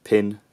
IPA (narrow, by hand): pʰɪn